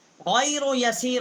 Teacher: غین جو ہے ادنائے حلق سے اس کا مخرج ہے، یہ بھی حروف حلقی ہے